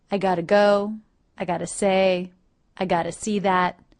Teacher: the words I have got to can reduce to I've gotta or even simply I gotta in everyday conversation